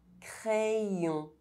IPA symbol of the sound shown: j